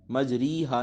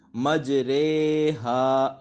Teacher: را کو اردو کے لفظ قطرے کی را کی طرح پڑھیں، یعنی ری نہیں پڑھنا بلکہ رے پڑھنا ہے ، اور اس کے ہجے اس طرح کریں گے، میم جیم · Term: امالہ